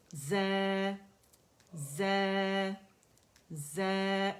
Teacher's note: یہ 2 کاؤنٹ ہوگی کیونکہ صرف مد لیٹر ز کی آواز کو کھینچ رہا ہے